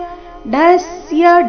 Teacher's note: ಡ ಮೇಲೆ ಆಘಾತ ಡ ಮಹಾಪ್ರಾಣ ರಸ್ವ